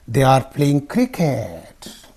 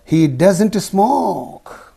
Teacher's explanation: falling down your voice is coming down decreasing at the end the pitch Falls at the end of the sentence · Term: Falling intonation